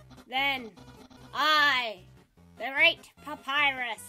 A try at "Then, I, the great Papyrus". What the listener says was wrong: You should roll your R's for that.